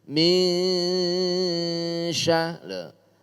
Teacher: Samar antara nun dengan syin. Munculnya samar itu karena ada mendengung. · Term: ikhfa